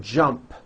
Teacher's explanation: the final sound in jump is a p which is unvoiced